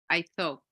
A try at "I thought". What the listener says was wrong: Okay, we're going to open it more. Thought. Thought, or you can say this, thought.